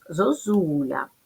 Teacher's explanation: перший голосний звук о наближений до у